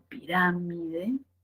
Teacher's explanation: donde la mayor fuerza de voz está en la antepenúltima sílaba